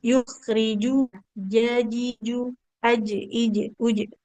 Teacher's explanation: Kalau jim tengah lidah menempel ke langit-langit atas. Mirip huruf j yukhriju jaji ju aj ij uj.